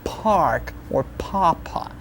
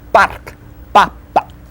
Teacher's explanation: Just like with a K, don't breathe out when you say it.